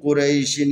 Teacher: یا ہے یا ساکن ہے، اس سے پہلے را کے اوپر زبر ہے، لذا اس کو نرمی سے پڑھنا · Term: لین